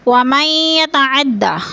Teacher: یا مشدد ہے، سختی سے جمع کر پڑھیں گے، ادغام کریں گے۔